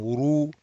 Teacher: Ra heavy, raise the back of the tongue.